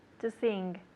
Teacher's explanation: you hear how she's saying the N and the G together to sing. It's a nasal sound